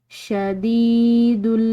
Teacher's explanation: دال کے بعد یا ساکن ہے تو اس کو ایک الف کی مقدار لمبا ادا کریں گے